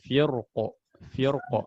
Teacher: Kalau waqaf maka jelas ro-nya tebal.